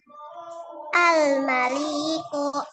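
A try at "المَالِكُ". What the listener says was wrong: Lamnya pendek, diulang lagi.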